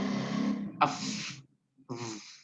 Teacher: Dia menempel gigi dan bibir bawah. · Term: labiodental